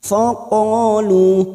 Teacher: Bertemunya mad dengan hamzah di lain kalimat. Pada saat dibaca waqaf, lu kita baca 2 harokat dulu. Dan nanti pada saat dibaca wasol, pada saat kita kembali dan dibaca terus, maka kita penuhi 5 harokat. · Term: mad jaiz munfasil